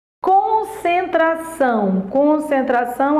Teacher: Concentração, a sílaba tônica é são.